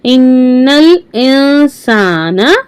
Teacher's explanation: नून साकिन के बाद सीन है यहां इफा होगा